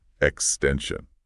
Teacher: for the word extension, the stress is right in the middle.